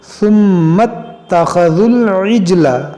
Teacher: ذال کو اس لام سے ملائیں گے